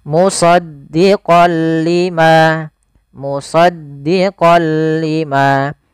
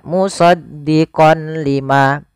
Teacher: memasukkan apa suara nunnya kepada huruf lam tapi tidak boleh disertai dengan gunah maka dinamakan dengan Idgham bila gunah hanya masuk saja langkahnya Bagaimana · ada fathatain bertemu dengan huruf lam awalnya kalau kita baca musaddiqon karena bertemu dengan huruf lam tanwinnya masuk ke huruf lam suara n-nya dihilangkan